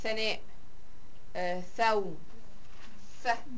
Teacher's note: طرف اللسان ما بين الاسنان، فعشان كده بسميه اسناني. يا اما طرف اللسان بيطلع فعليا، يا اما بيقرب على سلام. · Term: الث